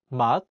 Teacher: In the word 맛, meaning taste, the 시옷 is in the 받침 position, so it's pronounced as 트. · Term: t sound